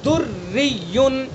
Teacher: دریون یہ راں مشدد ہے اور اس کے نیچے زیر ہے تو اس لیے یہ راں بھی باریک پڑی جائے گی۔